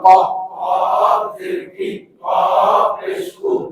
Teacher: জিহ্বার গোড়া থেকে মোটা ভাবে আদায়